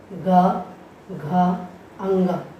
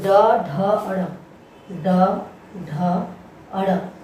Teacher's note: प्राणवायु में कंपन होता हो, गूंज होती हो, नाद होता हो, ऐसे वर्णों का उच्चारण जहाँ पर होता है वह घोष कहलाते हैं।